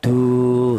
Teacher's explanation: Kemudian am turiduna di sini du tadi ada wau mati yang di dalam huruf yang berharakat fathakah dibaca mad thobi'i panjangnya satu alif atau dua harakat atau dua ketukan